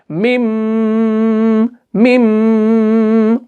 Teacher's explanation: और मिम को जो आप खींच रहे हो ना वो आपको नाक में गुन्ना करना है 2 से 3 सेकंड तक का, हार्डली 2 सेकंड का आप इसमें गुन्ना करें।